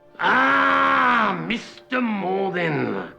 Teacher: >> Never has a name been said with such thinly veiled contempt. You can almost hear the anger and anticipation of revenge under every stretched out syllable.